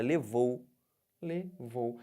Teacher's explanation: Mas semivogal agora você vai descer Olha a palavra levou levou agora eu tô partindo de quem do Ó para o u que que tá acontecendo tô descendo Então eu tenho um ditongo decrescente